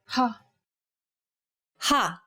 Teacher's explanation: saying this sound involves a forceful expulsion of air